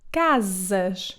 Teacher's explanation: It can also sound like Z if it comes between two vowels as the first S in the word casas. It can also sound like sh when at the end of words, like the second S in the word casas